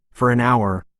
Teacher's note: linking R adding an R sound when a word ending in R is followed by a vowel sound